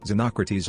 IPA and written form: zəˈnɒkrəˌtiːz (Xenocrates)